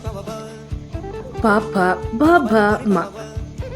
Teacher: ಇವನ್ನು ಉಚ್ಚರಿಸುವಾಗ ತುಟಿಗಳು ಒಂದಕ್ಕೊಂದು ತಗಲುತ್ತವೆ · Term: ಓಷ್ಟವ್ಯ, ಓಷ್ಠವ್ಯ